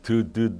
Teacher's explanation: 뭔 말이냐면은 디귿을 발음해보면 알겠지만 드드드 해보면요. 혀끝과 윗 잇몸이 딱 붙었다 떨어지면서 소리가 납니다. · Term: 혀끝 소리